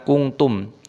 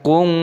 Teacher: Lau kuntum ta'lamun, ini ada nun sukun yang bertemu dengan tak, dibaca ikhfa, dibaca samar. Kuntum, tidak boleh langsung dibaca kuntum, harus disamarkan kung, itu namanya ikhfa